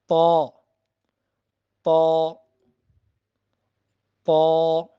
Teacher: یہ زبان کی نوک اور اوپر کے جو دانت ہیں ان کی جڑ سے ادا ہوگا۔